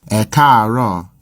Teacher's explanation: Note that if there's more than one tone in one syllable, then the vowel is normally written once for each tone. These three A's are all part of a single syllable, but with a high, low, high progression.